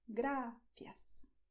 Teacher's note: You are not going to roll your tongue. You're not going to bend it backwards as you have in English when you say, for instance, rice.